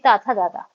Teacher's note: वो त वर्ण के जो होते हैं यानी ता थ द धा है ना ये हमारे सारे दंत होते हैं